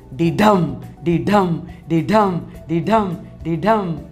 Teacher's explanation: unstressed syllable followed by stressed syllable